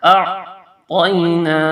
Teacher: نون کے اوپر کھڑی زبر ہے، یہاں اس کو تھوڑا سا کھینچ کے پڑھیں گے، اور یہ تو تینا نہیں پڑھنا، توئی تو حرف مستعلیہ موٹا حرف۔